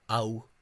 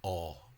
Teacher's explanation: in West Kerry and in parts of South Kerry has become ow, whereas in most of Munster it has remained aw